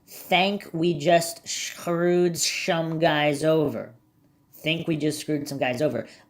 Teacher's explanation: I believe he pronounces his S like an SH in some instances.